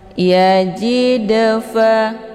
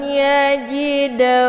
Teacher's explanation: cara bacanya dalnya dipantulkan dengan pantulan ringan